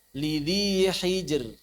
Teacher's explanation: ro sukun sebelumnya sukun sebelumnya kasrah maka ini dibaca tipis juga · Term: ro yang tipis